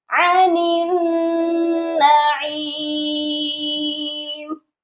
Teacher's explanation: جب ہم نے نون کو نون مشدد کے ساتھ ملانا ہے تو غنہ لازمی ہوگا